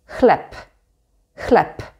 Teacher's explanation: Here the b is at the end of the word, so we say p, chleb, chleb.